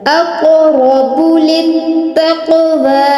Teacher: قلقلہ بھی ہے اور را پر تفخیم کریں گے للتقوى دیکھیں قاف کو ہلا کے بھی پڑھ رہے ہیں اور قاف کو پر بھی پڑھ رہے ہیں